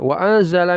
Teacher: ee iya masuk ke tanwinnya kemudian dighunahkan wa anzala tanwi e nun sukun bertemu zai ikhfa disamarkan lalu didengungkan